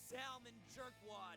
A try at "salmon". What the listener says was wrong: Oh, he pronounces salmon with the L. It's salmon, dude.